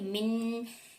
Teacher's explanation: नून की जो वॉइस होती है वो नाक से निकलती है, नोज से आती है, तो इसलिए यहाँ पर रुकी थी, गुन्ना मैंने नहीं किया था। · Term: नून की आवाज